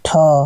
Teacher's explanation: हवा ज्यादा ही निकल रही है त द प के तुलना में ठ में ज्यादा निकलता है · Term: महाप्राण व्यंजन